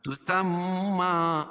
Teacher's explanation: میم مشدد میں غنہ ہوگا